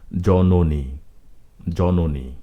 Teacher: মধ্য অ এর পরে দীর্ঘ ইকার রয়েছে সেজন্য মাঝখানের অটি ও বা ওকারের মত উচ্চারিত হয়েছে